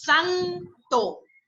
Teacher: esa fuerza tónica que tiene san, eso ahí hay un acento prosódico